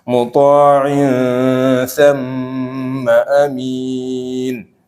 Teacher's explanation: kalau mim ada tasdidnya ditahan 2 harokat